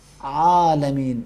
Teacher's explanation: ہوا کو، آواز کو حلق کے دیواروں کے ساتھ تھوڑا سا کھینچ کے ادا کریں گے. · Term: حرف عین